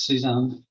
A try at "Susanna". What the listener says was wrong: It's German, so it's pronounce the E.